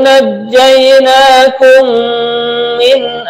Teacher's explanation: mim mati bertemu mim, namanya idgham mislain atau idgham mimi juga boleh, dibaca mendengung